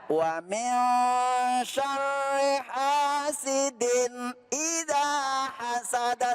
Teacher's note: Ketika nun mati bertemu dengan huruf shin maka dibaca Ikhfa. artinya Samar. tidak Jelas.